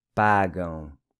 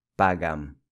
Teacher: This AM in Portuguese is pronounced with a nasal ão sound. Pagam, not pagam.